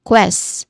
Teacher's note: the sound the letter q makes is the consonant cluster of k and w